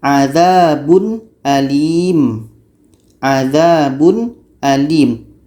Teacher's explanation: izhar halqi dibaca jelas Ya jelas dan tidak dengung